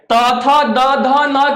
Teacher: त थ द ध न का उच्चारण जो होता है वो दंत से होता है